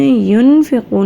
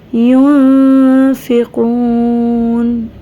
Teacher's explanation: یہاں ہم نے ینفقون نہیں کرنا، جب یہاں ہم نے نون پہ غنہ کرنا ہے تو ہم نے آواز کو چھپا لینا ہے، نہ کی جگہ ہم نے نون کی آواز کو اندر کی طرف چھپا لینا ہے